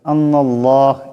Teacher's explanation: আল্লাহর লামকে মোটা করে পড়তে হবে